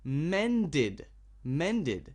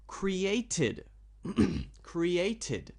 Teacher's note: If the verb, the normal verb, ends with a d or ends with a t, then the ed sound will be id, a very strong id sound